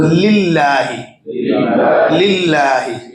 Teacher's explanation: दूसरा जो अल्लाह वाला लाम है लाम जलाला जिसे कहते हैं वो भी बारीक हो रहा है। उससे पहले ज़ेर आने की वजह से जो आगे हम उसकी तफ़ीलर पढ़ेंगे।